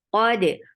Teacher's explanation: Qaf is heavy. Attach with dal. Dal will get sifa qalqala.